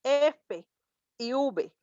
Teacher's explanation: tal labios dentales es decir los labios con los dientes dice el labio inferior con los dientes superiores en la parte de los dientes de arriba y el labio